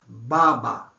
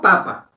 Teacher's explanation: Comparen baba con papa y ustedes van a encontrar que cuando se dice baba hay actividad de las cuerdas vocálicas. El aire pasa y mueve las cuerdas vocálicas y uno cree que es más corta y más densa la sílaba. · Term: sonora